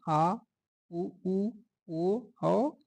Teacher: पश्च स्वर जिह्वा के पिछले भाग से जिन स्वरों का उच्चारण होता है उसे पश्च स्वर कहते हैं